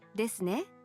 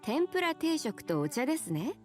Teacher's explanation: when you want your listener to confirm the information you have, you can end your statement with ね and say it in a rising tone, as in, ですね it is, isn't it?